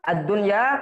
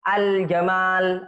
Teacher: Seperti misalnya ad-dunya kalau untuk lam yang tidak dibaca, kalau untuk lam yang dibaca seperti al-jamal